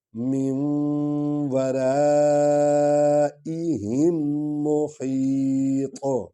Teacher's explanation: ہا حلق سے ادا ہوگی، اور طا جو ہے یہ پر پڑھا جائے گا، تالو کے ساتھ زبان جا کر لگتی ہے اور آیت ختم ہو گئی ہے۔